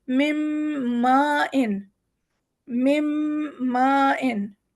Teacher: ہے، مما، لیکن یہاں پر ہے نون بھی بیچ میں، تو ہم اس میں نون کا غنہ نکالتے ہوئے میم کو ملائیں گے